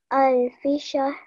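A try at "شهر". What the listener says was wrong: Well done. Say the ra at the end.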